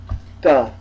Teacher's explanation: we begin with the hard non-aspirated consonant guttural